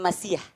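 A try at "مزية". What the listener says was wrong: Nah, kalau masiyah kita bingung artinya. Tapi ini mungkin lahzahnya. Sebetulnya yang tepat bukan masiyah, maziyah. Pakai zai. Coba maziyah. Yang saya mau garis bawain tadi maziyah.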